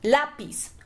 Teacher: La sílaba tónica está en la. Y pis es la sílaba átona.